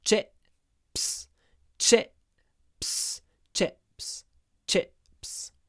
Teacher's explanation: there's a little pause before the P